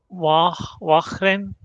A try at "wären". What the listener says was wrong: Way, not wa. Way.